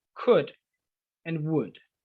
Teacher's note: La L en estos casos no se pronuncia. It is silent.